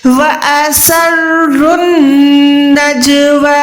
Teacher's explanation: را کو جو ہے ڈائریکٹ اپنے نون کے ساتھ ملا لینا ہے